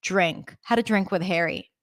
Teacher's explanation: Notice also when D and R are connected, we say J, drink.